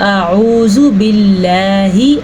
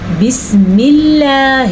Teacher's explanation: لفظ اللہ کو ہم نے اس لیے باریک پڑھا کہ اس سے پہلے زیر ہے